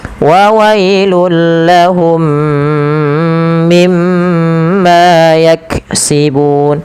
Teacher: Lahum mimma sama mim mati bertemu idgham mimi. Mim yang pertama masukkan mim kedua dan ditahan sepanjang 2 harakat. Kemudian mim yang kedua yang itu ditahan, yaitu adanya gunnah.